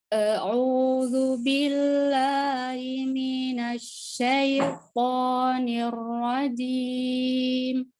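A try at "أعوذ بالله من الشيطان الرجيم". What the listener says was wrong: Nah, ini pertama ainnya masih kurang ya. A'u, jelaskan, tegaskan huruf ainnya. Tegaskan ain. A'u. A'udzu billahi minasyaitonir rajim.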